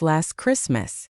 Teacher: Notice how I didn't really pop the T in last? Just slides right into the ch of Christmas.